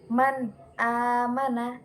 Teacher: bertemu dengan Hamzah Man amana jadi kata izhar Maksud jelas adalah bacaan nun sukun yang ketika bertemu dengan Hamzah itu dibaca jelas